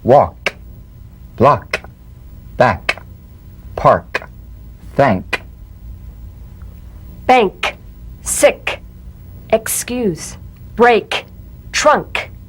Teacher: let the tongue spring away in the soft, unvoiced click of the K drum beat. Feel a crisp tap and a pulsation in the back of the tongue.